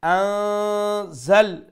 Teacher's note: Nun has a standing fatha with stretch one alif long